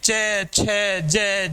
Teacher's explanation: क्योंकि जब हम च वर्ग का उच्चारण करते हैं, च छ ज झ ये का उच्चारण करते हैं तो स्पर्श तो होता ही है, प्रश्वास का उच्चारण स्थान के साथ स्पर्श तो होता है, लेकिन स्पर्श के साथ साथ हल्का सा संघर्ष भी होता है। संघर्ष मीन्स घर्षण, हल्का सा घर्षण भी होता है, इसीलिए इन्हें स्पर्श संघर्षी व्यंजन कहा जाता है।